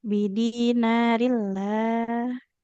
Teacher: lamnya jangan ditebalkan, Ibu. Huruf lam enggak tebal.